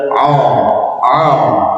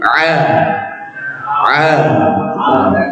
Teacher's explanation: infitah itu suaranya tipis maksudnya tidak o o tapi a a kemudian dibuka dibuka apa ya terbuka antara lidah dan langit-langit tidak